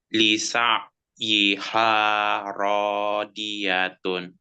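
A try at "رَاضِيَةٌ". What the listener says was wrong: Di-nya masih dal, masih dal. Di-nya masih dal. Di ya, di. Iya, sisi lidah, ya tadi sisi lidah, kiri kanan lidah, bertemu dengan gigi geraham atas. Di, diatun, diatun, diatun. Ya, lisa, lisa'iha radiyatun.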